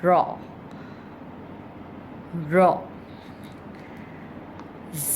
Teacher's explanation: رو کے اوپر جب زبر ہوتا ہے تو رو کو موٹا پڑھتے ہیں